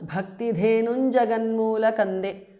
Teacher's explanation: Jaganmoola kande is a compound word. Bhakti dhenum ends in anuswara followed by ja, so it becomes bhakti dhenun jaganmoola kande. Anuswara changes to nya.